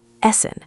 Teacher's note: The double s gives it a sharp hissing sound.